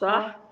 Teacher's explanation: من جذر اللسان والحنك اللحمي. نعم، من جذر اللسان اللي هو أدنى الحلق. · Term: الخاء